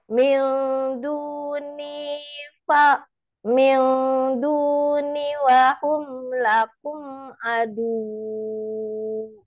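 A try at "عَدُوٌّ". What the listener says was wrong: Kalau berhenti naikkan saja suaranya. Tidak boleh dipanjangin.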